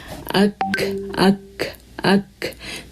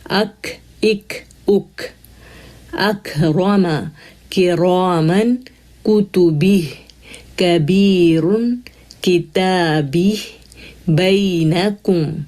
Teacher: دیکھیں hard پائلٹ پہ touch ہو رہی ہے زبان، زبان کی جڑ اٹھ رہی ہے اور اوپر ٹچ ہو رہی ہے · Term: کاف